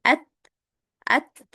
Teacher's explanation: huruf ta juga enggak boleh qalqalah ya. Enggak boleh dipantulkan karena huruf ta itu bukan huruf qalqalah.